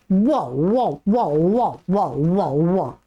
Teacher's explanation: श्रिक्किणी स्थान वाला है वकार, दंत और ओष्ठ वाला नहीं है